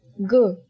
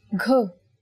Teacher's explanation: Next, let's take a look at g, which is the same as the sound of the letter G in the English word game. Yes, when you say g without aspiration, you get g. But when you say it with aspiration, you get gh.